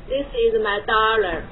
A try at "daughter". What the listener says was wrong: 不 是 ▁dollar, ▁这 是 美 元 了 ， 读 ▁daughter。 你 读 成 美 音 就 是 ▁dollar, ▁D ▁E ▁R ▁这 样 。Dollar ▁会 读 吗 那 不 是 ▁dollar, ▁dollar ▁是 美 元 ， 这 个 是 ▁daughter。 好 ， 你 不 会 ， 你 读 音 音 ▁daughter ▁美 音 ▁daughter ▁你 选 一 个 你 会 读 ▁der ▁啊 ▁daughter ▁对 ， 你 不 要 读 ▁doctor ▁这 是 不 对 的 哈 。 第 二 就 是 也 不 能 读 成 ▁dollar, ▁这 个 是 ▁D ▁不 是 ▁L, ▁你 读 成 ▁L ▁就 ▁dollar ▁就 变 成 美 元 了 ， 美 元 就 是 ▁dollar, ▁OK? ▁$3 ▁就 是 ▁dollar, ▁这 是 ▁dollar, ▁这 是 ▁der。